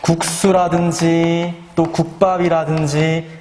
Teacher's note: 기역 뒤에서 이 시옷이, 기역 받침 뒤에서 이 시옷이 어떻게 발음이 돼? 된소리로 발음이 됐었단 말이야.